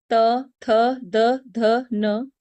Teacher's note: इन वर्णों का उच्चारण करते समय हमारी जीवा दांतों को टच करती है। इसलिए इन्हें दंत वर्ण कहते हैं।